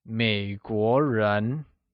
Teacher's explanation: 美国 is pronounced with a falling rising tone on the E and a mid-rising tone on the O